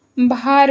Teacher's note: ल जो होता है वो र में